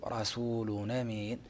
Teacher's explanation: ينقل حركة الهمزة إلى اللام فيقرأ رسول أمين ، ثم يحرك الألف بحركة التنوين أو الهمزة بحركة التنوين فيقرأ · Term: نقل الحركة